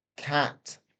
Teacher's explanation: The mouth opens quite a lot to be able to produce this but it's a short sound.